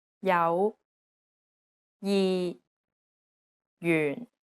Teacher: and one of the most confusing aspects is the J consonant although it's represented as a j it actually sounds like an English Y sound